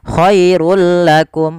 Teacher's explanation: Apa yang dimasukkan adalah bunyi suara nun sukun atau tanwinnya. Awalnya khairun, ketika bertemu lam langsung dimasukkan ke huruf lam tanpa ada penahanan. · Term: idgham bila gunnah